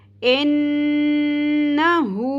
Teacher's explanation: حلق کے سب سے نچلے والے حصے سے ہا کو ادا کرنا ہے ہم نے